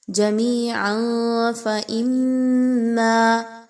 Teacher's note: جمیعا فإما، عین پر 2 پیش کی تنوین کے بعد فا کا حرف آ رہا ہے جو کہ اخفا کی طرف نشاندہی کر رہا ہے۔ تنوین کی آواز کو آپ نے چھپانا ہے ناک میں